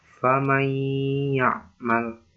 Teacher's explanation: nun sukun bertemu ya ini harus dimasukkan, dengan huruf ya dan berdengung. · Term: idgham bi gunnah